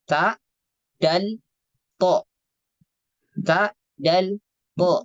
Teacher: Ada tiga huruf keluarnya dari ujung lidah dan bertemu dengan gigi seri atas